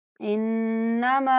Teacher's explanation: मीम को 4 second तक लंबा करेंगे